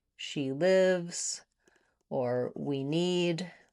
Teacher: these short words with just letter E are usually not stressed and they're shorter in duration